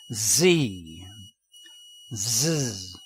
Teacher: if you add voice sound to the sound of s the sound is z